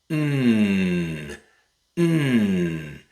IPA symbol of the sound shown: n